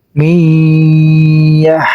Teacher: Jadi di sini juga nun sukun bertemu dengan iya, namanya idgham bigunah. Cara bacanya harus dengung dan ditahan 2 harokat.